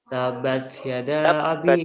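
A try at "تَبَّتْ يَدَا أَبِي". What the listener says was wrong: Ya tasdid. Tabat langsung, tidak tabat, tidak. Itu kayak taknya kamu matobiikan padahal enggak matobii. Ya langsung nempel ke huruf.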